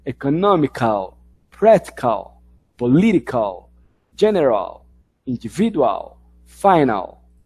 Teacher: A penúltima sílaba é onde estão aí as sílabas fortes